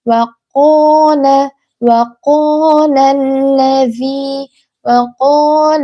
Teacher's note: Dalam kata waqola ini qofnya tebal